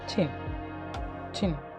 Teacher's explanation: പെലറ്റോ അൽവിയോള, tip of the tongue and teeth which are involved. Affricate, beginning as a plosive and end as fricative. Compress the air, release air gradually with a friction.